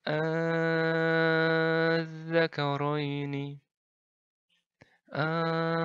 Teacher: Mad farq yang biasanya dipanjangkan 6 harakat full